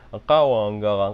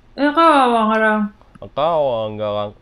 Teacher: that NG sound closer to the throat, K closer to the throat